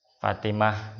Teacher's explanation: Taknya ini kalau disambung ada bunyinya yaitu tu atau ti atau tan, ada bunyinya. Tapi kalau di waqaf nggak ada, jadi h